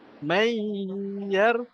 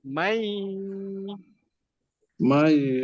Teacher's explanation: Jadi kalau masuk dengung ni, maksud dia tak ada langsung bunyi nun. Kita baca macam ya tu bersabdu je.